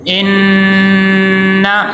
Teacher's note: نون مشدد ہے اور یہاں پہ غنہ ہوگا